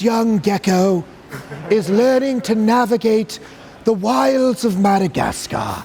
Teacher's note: he talks with a very aspirant onset right it's very breathy